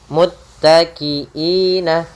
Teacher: pada lafal muttaki'ina ditekan pada huruf ta agar sempurna daripada ta'nya